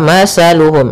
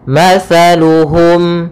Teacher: makhrajnya yaitu dari ujung lidah kita, ujung lidah menempel dengan gigi seri atas. Sehingga ketika pelafalan tha jangan sampai kita melafalkannya dengan masaluhum dengan huruf sin. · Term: huruf tha